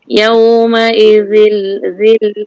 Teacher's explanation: Za nipis. Za keluar lidah. Tekan gigi atas tu kepada lidah tu. Yang keluar tu sikit tekan. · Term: zal